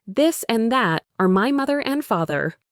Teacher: For the voiced sound in this, you also vibrate your vocal cords.